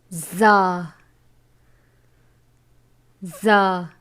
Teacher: زبان کی نوک اور دونوں دانتوں کے اندرونی کنارے سے ادا ہوتا ہے